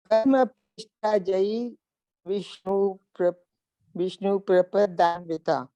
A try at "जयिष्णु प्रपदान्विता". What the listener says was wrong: माँ विष्णु नहीं, जयिष्णु प्रपदन्विता. प्रपदन.